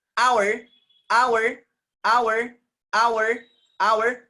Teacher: Consonant, but here H is silent.